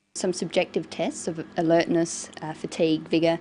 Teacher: She uses rising and falling tones, and a tone that's neither rising nor falling, just a flat tone for the items in the list.